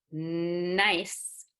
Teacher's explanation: press your palate down so that the nasal passage will be bigger and all that air is gonna be in the nose